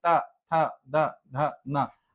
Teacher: फिर आते हैं हमारे दंत, इसमें क्या होगा, जीभ जो है वो दांत में छुएगी,